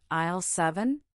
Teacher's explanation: The customer confirms the aisle number with a questioning tone.